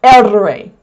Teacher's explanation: The other sound, the double R, erre, that's called a trill. It's a trilled sound. It's rolling the r some do it with their tongue on the roof of their mouth.